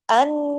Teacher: نون پہ تشدید ہے، بڑا غنہ ہوگا، آواز دیر تک ناک میں چھپے گی